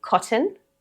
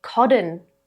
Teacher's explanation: You can use a true t, which is what I've been using, cotton. You can use a T flap, cotton. Or you can use the glottal stop, cotton. All 3 are completely natural in Australian English.